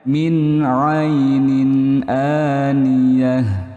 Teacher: Min dan sukun bertemu huruf ain, hukumnya idhar halqi juga. Idhar halqi karena jelas di tenggorokan.